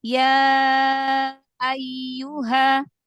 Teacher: dialirkan lagi ya-nya punya sifat rokhwa. Jadi jangan ayu.